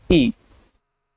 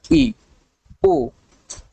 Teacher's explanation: जिसके उच्चारण में लगभग मुह बंद ही रहता है यानी मुह बहुत कम खुलता है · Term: समृत स्वर